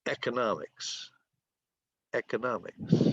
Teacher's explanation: The accent is on the 3rd syllable.